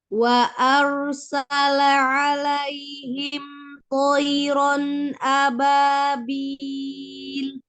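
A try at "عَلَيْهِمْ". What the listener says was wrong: Ya, tinggal ainnya. Ainnya jangan alaihim gitu ya. Si lamnya tidak langsung hilang.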